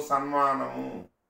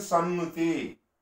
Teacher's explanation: అనునాసిక పరంగా ఉంది కాబట్టి ఈ తకారం దానికి సంబంధించిన అనునాసికంగా మారిపోవాలి. అంటే అనునాసికం ఆదేశంగా వస్తుంది. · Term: అనునాసిక సంధి